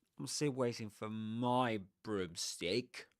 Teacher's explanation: you accent words like pronouns like he, she, it or determiners like my in this case and you de accent a noun like broomstick. That's because you're making a contrast between two things at least.